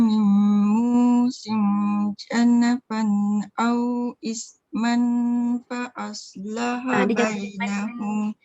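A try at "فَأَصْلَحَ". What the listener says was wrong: Dia jangan bunyi man sebab dia nak jumpa dengan fa. Au isman fa. Bayangan fa tu dah ada dekat situ.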